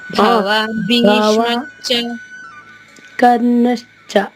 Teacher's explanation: భవాని భీష్మశ్చ విడదీసి పలకూడదు, కలిపే చదవాలి అందులో.